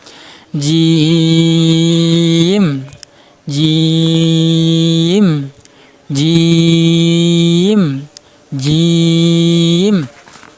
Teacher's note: এই দেখেন জিহ্বার মধ্যখান উপরে তালুর সাথে লাগছে। জিহ্বার মধ্যখান দাঁতের মাথায় লাগবে না, জিহ্বার মধ্যখান উপরে তালুর সাথে লাগিয়ে উচ্চারণ হবে।